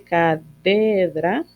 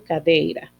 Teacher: La D fricativa en posición implosiva se vocaliza en yod. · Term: vocalización de D implosiva